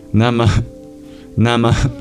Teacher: at the end, there's something called a visarga, an expulsion of breath. Literally. Nama, Nama, since the breath plays a grammatical role in Sanskrit.